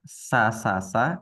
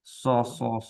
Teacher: dia persis dengan huruf Sin hanya beda satu saja yaitu Sin dirahang tipis Nah kalau Shad dirahang tebal